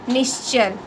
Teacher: यदि विसर्ग के बाद च या छ अघोष ध्वनियाँ हो तो विसर्ग का श हो जाता है। जैसे विसर्ग धन च बराबर श धन च आधा श च।